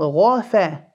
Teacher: the ghain full, the fa empty, and the ra full.